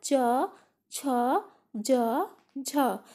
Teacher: तो तालव्य से च वर्ग का उच्चारण होगा